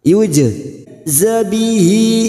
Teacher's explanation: huruf jim sukun qalqalah sugro yang mati asli di tengah kalimat jangan lupa dipantulkan.